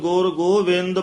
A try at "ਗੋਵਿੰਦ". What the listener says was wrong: ਗੋਬਿੰਦ ਟਿੱਪੀ ਨਹੀਂ ਹੈ ਇਥੇ